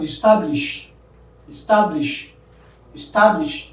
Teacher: the middle, that is ta, that is stressed